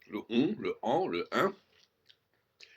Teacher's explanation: la diphtongue permet de transformer le N en une voyelle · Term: vocalisation